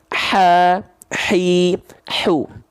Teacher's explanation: Nah, karakteristik nafas yang keluar karena dia dilafalkan dari tengah tenggorokan ini, maka akan otomatis berbisik atau seperti orang kepedesan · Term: hak kecil